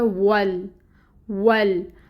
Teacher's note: वाव को आपने लाम के साथ मिला दिया, ये बन गया वल, वल।